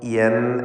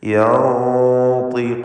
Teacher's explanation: ത്വാ തഫ്ഖീം ചെയ്യേണ്ട ഇസ്തിഅലാഇൻ്റെ ഹർഫാണ്. തടിപ്പിച്ച് സ്വരഭാരത്തോടെ ഉച്ചരിക്കേണ്ട അക്ഷരമാണ്. അതുകൊണ്ട് തന്നെ നൂനിൻ്റെ മണിക്കലിലും തഫ്ഖീം വേണം. യൻ എന്ന് നേർപ്പിക്കരുത്, മറിച്ച് യൻതിഖൂൻ.